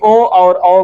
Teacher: ओ और औ कहां से बोले जाते हैं? कंठोष्ठ से।